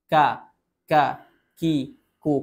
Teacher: infitah, terbuka aula tengah lidah, dikarenakan pangkal dan tengah lidah tidak naik, jadi ruangan atau aula tengah lidahnya terbuka.